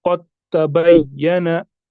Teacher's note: हमें इस दाल को ओमिट करना है, इसको हम नहीं पढ़ेंगे दाल को · हमने सीधे ता को किसके साथ मिलाया, कौफ के साथ, दाल को हमने उधर ही छोड़ दिया। क्यों, क्योंकि पहला हरफ मुतहरिक था, दूसरा साकिन और तीसरा मुशद्दद, हमने दाल को छोड़ दिया।